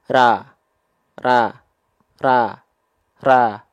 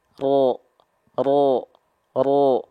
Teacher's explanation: cuma perbedaannya cuman tanpa mengangkat pangkal lidah dan angkat pangkal lidah perhatikan bibir saya tidak berubah Siap 1 2 3 ra ra ra ra ro ro ro